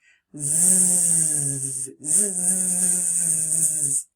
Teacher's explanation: The Z sound is continuous, which means it can be stretched out.